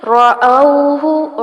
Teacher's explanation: را کو پر کیا جائے گا جبکہ ہا کو لمبا نہیں کرنا